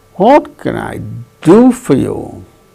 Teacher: Do gains that change in pitch, falling tone.